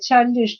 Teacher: the stress is again on the first syllable only